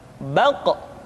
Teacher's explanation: Diucapkan dengan suara yang tebal dan dalam posisi sukun, maka terdengar pantulan suara. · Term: huruf Qaf